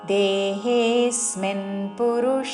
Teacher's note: దేహే రెండు దీర్ఘములు హే మీద ఆఘాత